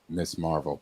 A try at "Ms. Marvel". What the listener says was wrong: MS period is Ms. Marvel. If you say Miss, then you're pronouncing MISS. They literally got a 2-letter word incorrectly.